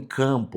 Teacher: a soma do A mais o M, eu vou ter um A nazalizado. Aí eu coloco o tio aqui para trazer a ideia da nasalização.